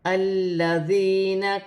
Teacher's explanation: لام مشدد ہے، لام کو اپنے سے پہلے حرف کی حرکت کے ساتھ ملا کر پڑھا جائے گا · دال مشدد ہے، واو ساکن سے پہلے پیش ہے، واو مدہ بن رہی ہے، ایک الف کی مقدار کھینچ کر پڑھا جائے گا۔ نون ساکن میں اخفا ہوگا، سین حرف اخفا میں سے ہے۔ یا ساکن سے پہلے زیر ہے تو یا مدہ بن رہی ہے، اسے بھی ایک الف کی مقدار کھینچ کر پڑھا جائے گا۔ · واو ساکن سے پہلے پیش ہے تو واو مدہ بن رہی ہے، اسے بھی ایک الف کی مقدار کھینچ کر پڑھا جائے گا